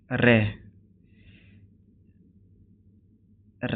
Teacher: रे रे दोस्तों वृत्त से भी होता है लुंठित भी होता है सघोष भी होता है अल्पप्राण भी होता है महाप्राण नहीं होता